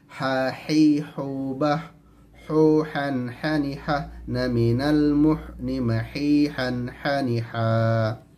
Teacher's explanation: huruf H mengalir udara dalam melafalkannya makhorijul huruf nya di tengah-tengah tenggorokan karena dia merupakan sifat daripada setiap Hames maka mengalir udara dalam